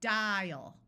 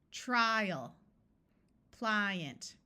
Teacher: In these unaccented syllables, the A is going to schwa. So we have dial with a clear long I and the A schwas